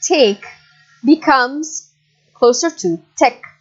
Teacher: So A-E, take. In these varieties, post-colonial Englishes, this sound, the diphthong, becomes closer to an E sound. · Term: monophthong